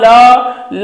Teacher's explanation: जीभ जब घूम रहा है ऊपर टच कर रहा है तो दोनों किनारों से हवा बाहर पास हो रही है · ल बोलने में आपकी जुबान थोड़ी सी जो जीभ है वो उल्टा घूम रहा है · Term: पार्श्विक